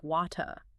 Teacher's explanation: A non-rhotic speaker softens or just eliminates that final sound.